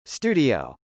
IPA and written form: stˈudi.oʊ (studio)